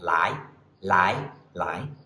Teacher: second tone starts in the mid-range and goes up quite High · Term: 2nd tone